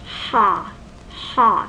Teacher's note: to open your mouth and my jaw actually pops ha ha the tongue is lowered and and and the back is involved so ha is a low back vowel